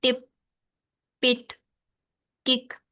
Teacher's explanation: in many accents of English syllable, final voiceless stops are accompanied by an overlapping glottal stop gesture · तो इन तीन sounds पे जो है वो ग्लोटल स्टॉप होता है कुछ इंग्लिश के एक्सेंट में से